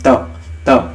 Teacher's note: उच्चारण में जो हवा निकल रही है ना उस टाइम हमारी जीभ जो है वो दांतों से टकरा रही है